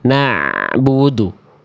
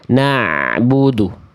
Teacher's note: Jadi ain itu nggak betul-betul mengalir, tapi nggak boleh juga tertahan. Dia sedikit mengalir. Tengah-tengah, sedikit mengalir ain itu.